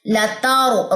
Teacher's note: را کو یہاں پہ کیا کریں گے؟ موٹا کریں گے